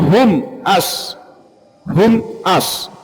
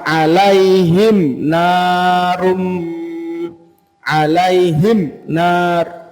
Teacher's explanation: huruf hijaiah kecuali mim dan ba ya kecuali mim dan ba kalau ada mim sukun maka di bacanya izhar jelas ngih jelas itu artinya satu ketukan tidak perlu ditahan tidak perlu di dengungkan